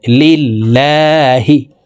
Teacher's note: হয় লিল্লাহি এই লামকে লা বলে অর্থাৎ পাতলাভাবে পড়তে হবে কারণ আল্লাহ শব্দের আগের হরফে জের আসলে উক্ত লামকে পাতলা করে অর্থাৎ লা বলে পড়িতে হয়